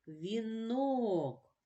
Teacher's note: вінок наголошений о але голосний і промовляється чітко